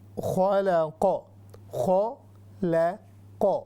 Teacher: خ موٹی ہوگی، لام باریک ہو گئے یہاں پر، اور اس کے بعد قاف ہے، پھر وہ قاف کو ہیوی پڑھیں گے.